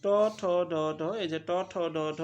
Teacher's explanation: ট, ঠ, ড যখন বলবা তখন কিন্তু দাঁতের একটু উপরে যাচ্ছে জিহ্বা, না? এইগুলা হচ্ছে মূর্ধন্য ব্যঞ্জন।